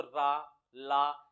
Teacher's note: जीभ जो है ना दांत पर लगती है दांत से थोड़ा ऊपर मसूड़ों पर लगती है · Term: दंत मूल, दंतमूल